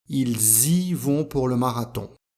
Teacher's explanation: à cause du S on doit faire la liaison entre le sujet et le pronom i